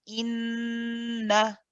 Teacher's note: when you continue, the continued na is not prolonged. That's just one count.